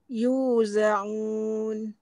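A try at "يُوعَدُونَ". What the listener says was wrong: Tu tak enjut pun. Tak enjut pun. Yuzaun.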